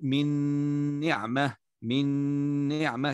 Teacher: إدغام بغنة وهو هنا إدغام كامل على قول الجمهور